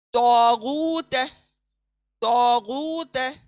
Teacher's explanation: next, तो मोटा खींचेंगे और एक अलिफ की मिकदार में अलिफ मद्दा आया है, गू वाव मद्दा आया है, इसलिए खींचेंगे एक मिकदार में